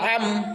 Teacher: आइन कहाँ से अदा होता है, दरमियान हल्क से आइन अदा होता है